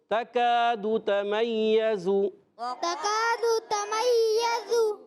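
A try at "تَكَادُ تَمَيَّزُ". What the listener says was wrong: یہ زا کی ادائیگی سیٹی والا ہے، یہ ذال نہیں۔ تکاد تمیز۔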